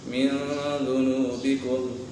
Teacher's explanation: من ذنوبکم یہاں پر اخفاء کا قدر لگ رہا ہے، نون ساکن کے بعد دال حرف اخفاء میں سے ہے تو یہاں اخفاء ہوگا، یعنی غنہ کر کے پڑھیں گے۔